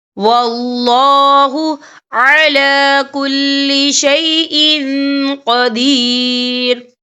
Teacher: تو ہم یہاں اکفا کریں گے، تنوین کی آواز کو ناک میں چھپائیں گے